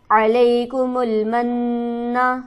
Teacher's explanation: علیکم المن, علیکم کو جلدی پڑھیں گے, من نہ کہ نون پر نون مشدد ہے, اس پر ہم غنہ کریں گے اور ذرا سختی سے رک کر پڑھیں گے